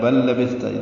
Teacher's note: 2 لام ملا رہے ہیں، بل ادغام ہو رہا ہے